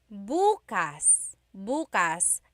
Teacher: emphasis is on the first syllable. that means tomorrow.